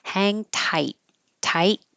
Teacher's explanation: hold the final T so you don't release airflow. A tiny pause.